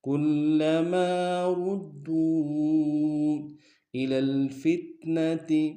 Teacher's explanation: واو مدہ اور مد منفصل ہے، کم سے کم دو الف انداز میں کھینچیں گے